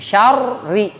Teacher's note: syar itunya tafkhim, bibirnya maju, ri tarkik, bibirnya mundur gitu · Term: tafkhim dan tarkiknya